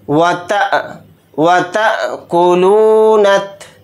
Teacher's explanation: हमज़ा साकिना है तो इस पर झटका लगाकर पढ़ेंगे, इस तरह से झटका देंगे व तअकुलूनत, नून को ता के साथ मिलाकर पढ़ेंगे, ये अलिफ और लाम नहीं पढ़ा जाएगा।